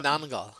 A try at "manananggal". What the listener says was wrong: There's no H in the gal. It's gal.